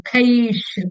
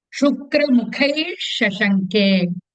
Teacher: Visarga is followed by Shakaraha. So Ish in between Mukhaish.